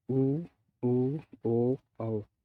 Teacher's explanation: जिन स्वरों के उच्चारण में होठों का आकार गोल हो जाता है वे वृत्ताकार स्वर कहलाते हैं, जैसे ऊ, ओ, औ।